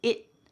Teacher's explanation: And that final word, it, also has a stopped T. So that T is going to be at the top of my mouth.